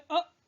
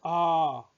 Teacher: ह्रस्व स्वर में अ कम समय लगा, दीर्घ स्वर में आ ज्यादा समय लगा